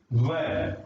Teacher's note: व का उच्चारण स्थान वकारस्य दंतोष्ठम, दंतोष्ठम। व दांत और ओष्ठ दो स्थानों से इसका उच्चारण होता है